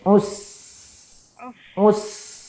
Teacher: ketika ujung lidah bertemu dengan gigi seri bagian bawah suara menabrak gigi seri atas dan bawah